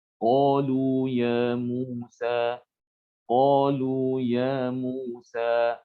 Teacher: Jadi tidak boleh kita memanjangkan bacaan ini pada lafaz qalu ya Musa pada huruf matnya tidak boleh dipanjangkan melebihi 2 harokat. Jadi harus dibaca 2 harokat saja ya. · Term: mat tabi'i